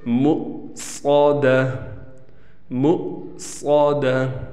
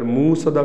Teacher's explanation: حمزہ ساکن ہے تو جھٹکے سے پڑھیں گے، اگر موصدہ پڑھا ہم نے تو پھر حمزہ ختم ہو جائے گا، واو بن جائے گا اور اس سے معنی تبدیل ہو جائے گا۔